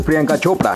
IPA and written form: prɪˈjəŋka ˈtʃoːpɽa (Priyanka Chopra)